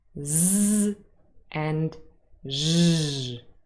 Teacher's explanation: a lot of force here to to produce those sounds and the vocal chords are really vibrating quite heavily and you can feel that